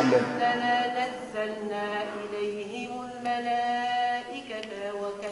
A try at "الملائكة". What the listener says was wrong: لا مش عاد الملائكة. شو الخطأ اللي عملتيه؟ زدتي لنا ألف التاء.